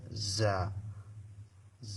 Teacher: জা এটা একটু চিকন একটা শব্দ বাইর হবে, এই শব্দটার সহিত জা উচ্চারিত হবে। জা এটার মাখরাজ হচ্ছে জিহ্বার আগা সামনের নিচে দুই দাঁতের মাঝখান বরাবর লাগে, ওইখান থেকে জা উচ্চারিত হবে।